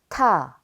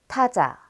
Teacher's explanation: T is a stop plosive with a stronger aspirated sound than d. Shaped like an E, t is pronounced like the t in et.